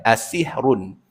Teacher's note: Jadi run ni dia kena tebal sebab baris depan kan. Sebab huruf dibaca tafkhim. Tebal asihrun.